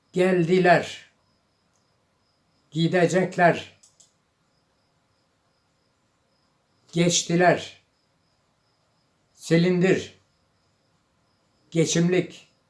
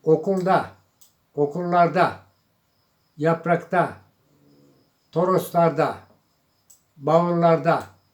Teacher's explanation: The words have all front vowels or all back vowels. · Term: vowel harmony